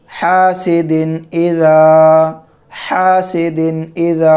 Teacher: تنوین کی آواز کو ظاہر کر کے بلا غنہ کے جلد پڑھیں گے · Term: اظہار